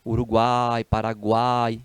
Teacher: então são os tritongos três vogais na mesma sílaba é porque a gente pronuncia de uma só vez